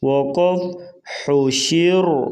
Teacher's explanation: حا پیش حو، شین زیر شی حوشی، را زبر را حوشی را، وقف حوشیر۔ را وقفاً جو ہے بریک پڑھی جائے گی، اگر ملا کے پڑھیں گے تو حوشی را تو پھر را موٹی پڑھی جائے گی، حوشی را، وقف حوشیر۔